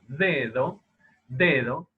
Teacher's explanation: Esa, digamos, la lengua, ¿sí?, que se aproxima a los dientes superiores, hay una aproximación parcial, no es una aproximación total, ¿no? Va a acercarse, pero el acercamiento no es total. · no es la misma pronunciación la de esa D en posición inicial de palabra, que no es aproximante, a diferencia de la segunda D, que es aproximante